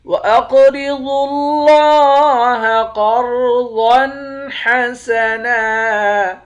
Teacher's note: قاف کو موٹا بھی پڑھیں گے، قاف پر قلقلہ بھی کریں گے۔ ضاد کو موٹا پڑھیں گے، ضاد کو لفظ اللہ کے لام کے ساتھ ملا کر پڑھیں گے، لفظ اللہ کے لام کے اوپر کھڑا زبر ہے، لفظ اللہ کے لام کو موٹا بھی پڑھیں گے، ایک الف کے مقدار کھینچ کر بھی پڑھیں گے۔